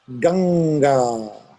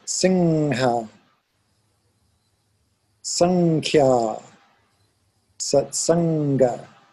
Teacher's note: So if I were to go the back of the tongue and close, I get a sound that's kind of like NG. It's ong. If I pronounce the river, it is Ganga.